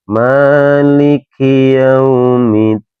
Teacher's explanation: K ini salah satu termasuk dari huruf hames, Teman-teman, ya mengeluarkan angin ketika dibaca.